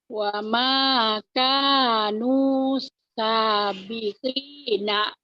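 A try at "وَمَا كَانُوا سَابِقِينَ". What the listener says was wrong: Lagu Ibu mah gini ya. Wa makanan sabiqina. Jangan digituin lagunya Bu. Jangan dientak-entak Ibu kalau itu ibarat bawa mobil, bawa motor digas-gas melulu. Jangan digas melulu, Bu.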